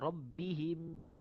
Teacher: mim mati jumpa dengan mim yang berbaris. Hukum dia adalah idgham mutamatsilain ataupun idgham mislain saghir.